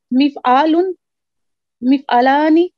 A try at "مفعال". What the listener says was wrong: مفعال نہیں کہیں گے، پہلے مفعال کی سنا ہے. مفعال عین کو لمبا نہ کریں، عین کو لمبا نہ کریں. مفعال ایک ہوتا ہے مفعال اور ایک ہوتا ہے مفعال، یہ دو الگ الگ ہے.